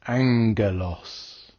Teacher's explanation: the first gamma is pronounced with a n Sound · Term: gamma nasal